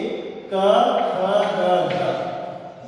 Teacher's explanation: क, ख, ग, घ ये कोमल तालों की ध्वनियां हैं हिंदी